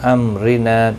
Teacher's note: را زیر کی وجہ سے باریک پڑھا جائے گا. نا الف مدہ ہے، ایک الف کی مقدار کے برابر کھینچ کر پڑھیں گے. · میم ساکن کے بعد را ظاہر شفوی ہوگا، را زیر کی وجہ سے باریک پڑھا جائے گا.